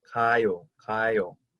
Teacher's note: it starts with a sound that's kind of like a soft K sound or a very soft G sound